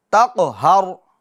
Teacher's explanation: काफ पुर भी होगा और काफ में कलकला भी करना, तक, आवाज़ लौटेगी, तक़हर।